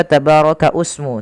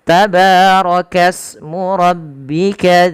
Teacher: Ini tidak dibaca tabaraka usmu, tapi langsung ke sin karena di sini adanya hamzatul wasal yang tidak dibaca